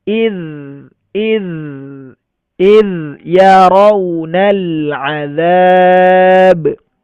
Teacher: huruf dzanya rakhawah alirkan suaranya